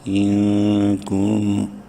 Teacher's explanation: نون ساکن کے بعد یہاں پر کاف حلقی میں سے نہیں ہے، اس لیے اس نون میں اخفا کریں گے